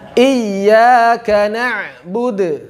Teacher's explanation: Maka bacalah ain pada lafaz na'budu dengan sifat tawassuta yang pas